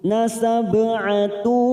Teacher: Qulu duma bertemu sukun. Nasab'atu, ba sukun qalqalah sugra karena mati di tengah kalimat.